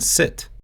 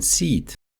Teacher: English makes a strong distinction between them. A shorter I sound like in sit, or a longer E sound like in seat. Russian speakers often mix those sounds up or pull them closer together.